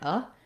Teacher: this first O in potato is vowel schwa, very short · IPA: /ə/